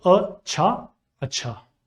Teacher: Since che is reduplicated, Tashdeed will be added on top of it. The next letter is do chashmi he, which aspirates the ch sound and makes it ch. The final letter is alif, which adds a matra to ch.